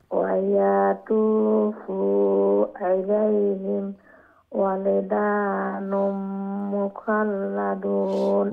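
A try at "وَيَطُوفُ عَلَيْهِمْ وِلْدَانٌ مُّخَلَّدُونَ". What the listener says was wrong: ওয়ায়াতুফু আলাইহিম, ওয়ায়াতুফু শর্ট, ওয়ায়াতুফু ফু বললে ওয়াওয়ার একটা হয়ে যাবে। ওয়ায়াতুফু আলাইহিম উইল, ওয়াওয়ের নিচে জের, উইলদানুম মুখাল্লাদুন।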